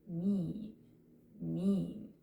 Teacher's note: This is where in the mouth your tongue is going to go, and this back here is your jaw, basically. So, for long I sounds in this case, our tongue goes up and more to the front.